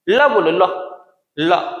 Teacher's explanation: ल में जो है दांत की तरफ जाता है कौन? जीभ, इसलिए ल क्या है? दंतव्य